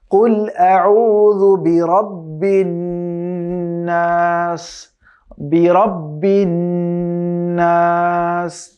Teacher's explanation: এখানে নুনের উপরে আমরা দেখতে পাচ্ছি একটি তাসদীদ আছে, এর মানে হচ্ছে এখানে তাসদীদ গুন্না করে পড়তে হবে, যেটা আমরা ওয়াজিব গুন্না বলে জানি।